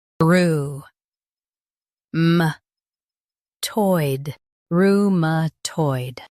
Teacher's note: Stress toid and keep roo soft.